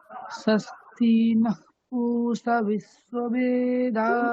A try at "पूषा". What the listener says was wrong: पूषा আকারটা দীর্ঘ, ঠিক আছে? তাহলে দীর্ঘ বলতে হবে।